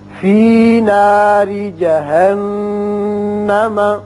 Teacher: یہاں را کے نیچے زیر ہے، اس لیے اس کو باریک پڑھیں گے. نون مشدد ہے، یہاں غننے کی آواز نکلے گی